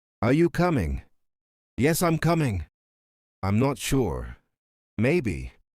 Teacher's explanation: Up and down like music. English is not flat. It goes up when you're unsure, down when you're sure, and up down when explaining. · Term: intonation